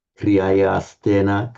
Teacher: So by Sandhi, the visarga becomes a s.